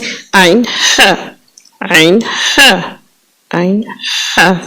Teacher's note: اور وسط حلق جو حلق کے درمیان میں ہے، وہاں سے عین ح، عین ح، عین ح نکلتا ہے۔ بس آپ نے اس طرح نکالنا ہے کہ جیسے یہ درمیان والے حرف کہ آپ کے گلے میں کوئی چیز پھنسی ہے تو آپ اس کو نکال رہے ہوں۔